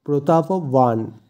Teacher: এখানে যেহেতু অন্তস্থীয় ব আছে তাই সংস্কৃত অনুযায়ী অন্তস্থীয় বয়ের উচ্চারণ হয় ওয়া, তাই এক্ষেত্রে প্রতাপবান।